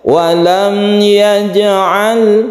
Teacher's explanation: Ya itu selain mim dan ba ya, berarti idhar syafawi, membacanya tidak didengungkan.